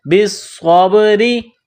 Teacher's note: را کے نیچے زیر ہے تو را کو باریک کرنا ہے